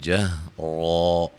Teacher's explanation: جب وقف کریں گے الف دو زبروں کو الف مدہ میں چینج کر دیں گے، ملانے کی صورت میں نون تنوین کا اظہار ہوگا۔